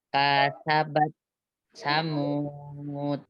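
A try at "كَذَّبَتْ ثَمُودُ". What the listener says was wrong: Ini zalnya bertasdid. Jadi kazza. Coba.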